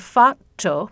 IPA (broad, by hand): fætːɔ